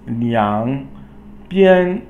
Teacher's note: liang is third tone, falling and then rising, and then bian is first tone.